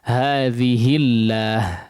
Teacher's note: Di sini juga hadhihi tidak dibaca panjang. Ya, hi-nya tidak dibaca panjang dikarenakan setelahnya dia huruf yang bertanda sukun. Di situ ada hamzah wasal, ada lam syamsiyah di situ pada lafzul jalalah, pada lafaz Allah, sehingga langsung masuk kepada lam yang kedua.